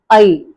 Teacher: first டிப்தாங் அ இ, அந்த ரெண்டு சவுண்டும் சேர்ந்து வருது